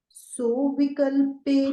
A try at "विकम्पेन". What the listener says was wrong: हाँ, विकल्पेन नहीं है, ये विकम्पेन है।